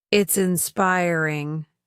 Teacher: Carefully stressing the second syllable just as my teacher drilled.